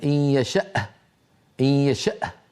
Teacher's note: الهمزه شديده مجهوره بل هي من اصعب الحروف لان فيها انحباس كامل للصوت وللنفس